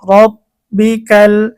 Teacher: এখানে যেহেতু রয়ের উপরে জবর আসছে এজন্য রটা মোটা হবে